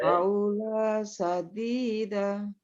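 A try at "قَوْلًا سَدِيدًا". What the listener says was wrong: Ko. Lannya muncul, 2 tanwinnya muncul ya. Qaulan.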